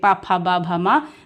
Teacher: बिना होठों को आपस में स्पर्श किए बिना नहीं बोल सकते, इसलिए ये होठ से बोले जाते हैं